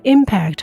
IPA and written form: ˈɪmpækt (Impact)